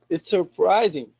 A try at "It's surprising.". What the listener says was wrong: Good. Get rid of the R.